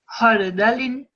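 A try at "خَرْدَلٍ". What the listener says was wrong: Just try to make the kha a bit more prominent. Khardalin. Khardalin.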